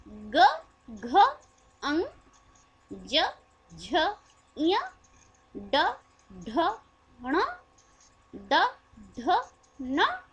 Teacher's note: सघोष का अल्प प्राण, सघोष का महाप्राण और सघोष की नासिक जो अल्प प्राण भी है